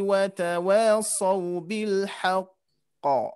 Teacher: Nah, harus ada jeda ya. Karena qafnya bertasdid.